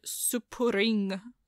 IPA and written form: supurɪŋ (supuring)